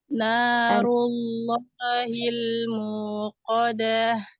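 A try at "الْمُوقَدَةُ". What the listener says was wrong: Muqadah. Danya jangan dipanjangkan karena tidak ada mad di situ ya. Muqadah. Yang ngalir ha. Hanya yang dialirkan.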